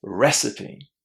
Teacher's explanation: Which syllable is stressed? Recipe. The first one.